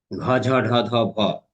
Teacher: গজট দ ব যখন বলছি দেখো স্বরতন্ত্রী কম্পিত হচ্ছে একটু। ঘ ঝ ঢ ধ ভ, একই সাথে বাতাসের চাপের আধিক্য আছে, স্বরতন্ত্রী কম্পিত হচ্ছে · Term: ঘোষ ধ্বনি